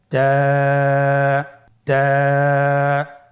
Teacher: জিহ্বার আগা সামনের উপরের 2 দাঁতের গোড়ার সঙ্গে লাগিয়ে উচ্চারিত হয়।